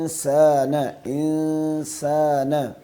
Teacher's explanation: دونوں غنہ کو ایک جتنا، ایک الف کے برابر اس کو لمبا کرنا ہے